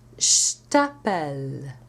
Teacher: But if you say je t'appelle, I call you, the T, which is unvoiced, devoices the je into sh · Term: regressive devoicing